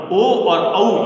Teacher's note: ओ और औ ये जो वर्ण हैं ओ और औ, इनका जो उच्चारण स्थान है वो कंठोष्ठ है